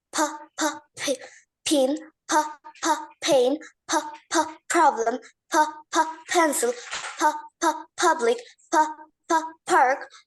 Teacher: খেয়াল করো, দুই ঠোঁট আগে একসাথে মিলাবে, মিলিয়ে তারপরে বলবে হ, বাতাসটা ছেড়ে দিবে। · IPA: /p/